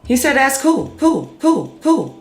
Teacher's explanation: so that's an L turning into a vowel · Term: vocalization